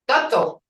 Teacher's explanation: Phoneticians refer to it as a voiceless lateral fricative.